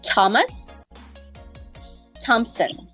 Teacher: there are some names that appear to be th sounds but they actually sound T like Thomas Thompson